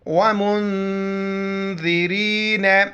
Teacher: نون یہ blue colour میں یہاں پر اخفا کریں گے، ناک میں آواز چھپائیں گے